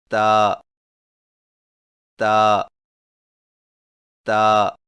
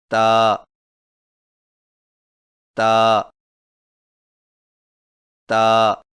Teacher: تا کی ادائیگی میں زبان کی نوک کو سامنے والے اوپر کے دو دانتوں کی جڑ سے لگا کر باریک آواز میں پڑھیں، یعنی تا تا تا۔